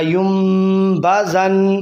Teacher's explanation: یہاں بھی نون ساکن کے بعد با آ گیا تو اقلاب کا قاعدہ اسے میم سے بدل دیں گے